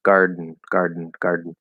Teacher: you block the back of your throat while keeping the same position for n and then you release that and it's like trying to do like two ends one after